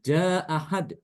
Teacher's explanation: yang fathah gampang ya kalau Apabila ada fathah ketemu fathah maka Imam albazi itu dengan bacaannya dengan membuang Hamzah pertama